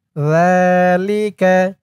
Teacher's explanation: জালের উচ্চারণটাও নরম হবে। সা আর জাল এই দুইটা অক্ষরের উচ্চারণ মুখের এক জায়গা থেকে হয়।